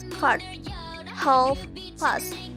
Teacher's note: This is an open vowel in the region of cardinal vowel number 5.